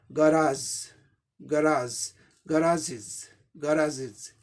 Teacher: इसी को अमेरिकन में ग हो जाता है, गै के बदला ग